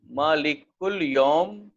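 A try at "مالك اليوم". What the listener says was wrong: دوسرا لفظ ہے اس کی حرکت ظاہر کریں. مالک الیومی.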